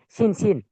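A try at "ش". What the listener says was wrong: সিন নয়, শিন। শিন বা শিন র।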